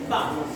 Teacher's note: पा का उच्चारण तभी होगा, ये दोनों ओठों का सहारा लेना पड़ेगा। उपपद्यमानीयानां ओष्ठौ मतलब इसके उच्चारण का स्थान यही है, ओठ।